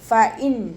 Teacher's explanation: നൂൻ സാക്കിനയെ വ്യക്തമാക്കി മണിക്കാതെ ഓതുക. ഫ ഇൻ നൂനിൻ്റെ സൗണ്ടിനെ വ്യക്തമായിട്ട് കേൾപ്പിക്കുക.